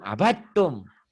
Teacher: Abtum bukan abtum, abattum. Dal ini hilang, idgham mutajanisen. Ini dal masuk ke ta.